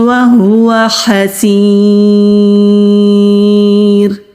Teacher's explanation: را سے پہلے کیونکہ زیر ہے تو اس لیے را کو باریک پڑھیں گے، موٹا نہیں پڑھیں گے